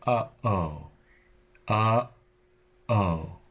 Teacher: also the sound in the middle of uh o uh o there's a stop there that dams the air before you switch from uh to O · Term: glottal stop